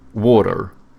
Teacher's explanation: Americans, they have soft T's, and then they pronounce their R's, so they go water, you know?